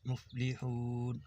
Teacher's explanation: ہا باریک پڑھیں گے حلق سے